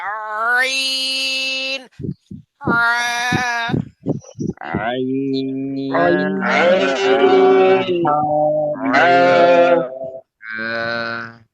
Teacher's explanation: হলকের মধ্যখান মানে গলার মাঝখান, কণ্ঠনালীর মধ্যখান চিপায় উচ্চারণ হবে। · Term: 2 নম্বর মাখরাজ